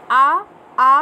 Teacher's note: इस तरह से इसके छः भाग किए गए हैं। आ आ को कंठ ध्वनियाँ कहते हैं, ये कंठ से इसकी आवाज़ निकलती है